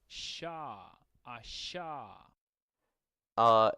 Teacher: this is the post-alveolar fricative